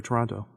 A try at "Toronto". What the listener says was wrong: You guys keep saying the name of the town wrong. It's not Toronto. You don't pronounce both T's. It's Toronto. that's how you say it if you're from the Great White North.